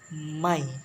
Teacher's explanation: Consonant sound which are produced putting two lips together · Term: bilabial sound